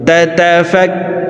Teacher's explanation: মদের হরফের বামের হরফে ওয়াকফ হইলে মদ্দা আরজি তিন আলিফ টানিয়া পড়িতে হয় তাতাফাক্কারুন كذلك يبين الله لكم الآيات لعلكم تتفكرون। প্রিয় দর্শক, আমি